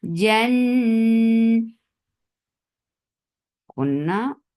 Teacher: keep the sound in your nose for a longer time. Na 2 counts long. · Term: akmal kunna